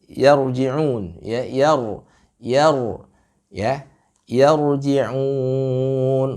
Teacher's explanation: roknya ditafkhimkan kembali